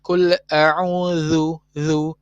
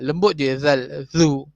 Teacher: Dan ni gigi atas, ni lidah. Pastikan angin yang keluar antara dua gigi dengan lidah ni, itulah yang akan mengeluarkan bunyi zal.